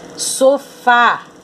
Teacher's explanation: a sílaba tônica é o fá